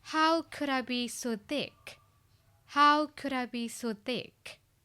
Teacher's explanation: Yes thick is the loudest word because ကဒါအဓိကထားပြီးပြောချင်တာနောက်ဒီမှာ intonation ကလေကိုယ့်ကိုပြန်ပြီးတော့လေ blaming လုပ်နေတဲ့ tone ဖြစ်တဲ့အတွက်ကြောင့်မို့လို့ဒီ falling tone ရဲ့